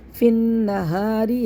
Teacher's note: ہا کو ہا پڑھ دیتے ہیں، اس طرح نہیں کرنا ہے۔ فی النہاری ہا کو سینے سے نکال کے پڑھنا ہے ، اور را کو باریک پڑھنا ہے، ری را کو معروف